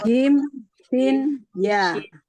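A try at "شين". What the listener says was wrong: bukan sin ya, tapi shin,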